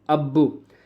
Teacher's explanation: پہلے ہم نے حمزہ کو با کے ساتھ ملایا، پھر ہم نے با کو پیش کے ساتھ ملایا، با کو ہم نے 2 مرتبہ پڑھا، ٹھیک ہے؟ اسے کہتے ہیں تشدید۔